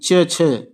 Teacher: च वर्ग में जो ध्वनियां आती हैं वह तालु के अंतर्गत आती हैं